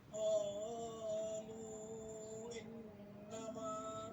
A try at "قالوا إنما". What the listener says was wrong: Lu-nya yang panjang ya.